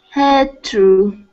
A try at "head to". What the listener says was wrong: You're still opening your mouth. So we need to just focus on the mouth closing now because we're pronouncing head to. Head.